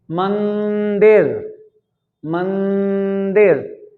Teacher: अब इसको एक बार आप बोल कर देखिए, बोल कर देखिए कि क्या मंदिर को बोलने में हवा नाक से बाहर निकल रही है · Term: अनुस्वार